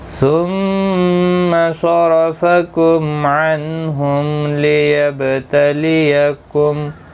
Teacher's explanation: میم ساکن ملانے کی صورت میں اظہار شفوی ہوگا، ظاہر کر کے پڑھیں گے. اور وقف کی صورت میں میم ساکن ہی رہے گا.